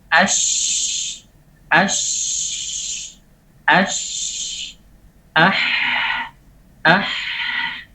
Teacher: Pita suara terbuka, kemudian tidak ada getaran, kemudian disertai dengan nafas yang berjalan dengan lancar. · itu kita tekan di bagian paling bawah di tenggorokan, itu bisa kita dapati tenggorokan paling bawah tidak bergetar sama sekali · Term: hamas, huruf hamas